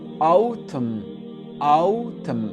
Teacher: Donc le N ici, il n'est pas prononcé. C'est comme s'il n'existait pas.